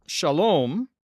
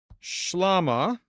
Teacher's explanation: whereas Hebrew has that O vowel, Aramaic's going to have that A vowel, but they share the shin